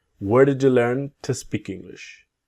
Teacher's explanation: So, the to becomes a t.